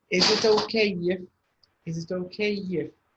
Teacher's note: if you end with a vowel sound, and the next word starts with a vowel, you also have a y sound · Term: linking